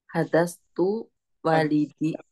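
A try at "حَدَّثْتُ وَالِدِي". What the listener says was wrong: Tasydid. Haddas.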